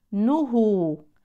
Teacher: انتبهوا لضم النون نهو وليست نه النون ليست مفتوحه